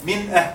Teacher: Noon here is very clear. And I didn't say anything regarding ghunna. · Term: Izhar